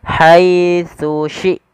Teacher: Harusnya dia tsu huruf tsa yang pertama ujung lidah kita menempelkan dengan gigi dari atas kemudian syin dari tengah lidah kita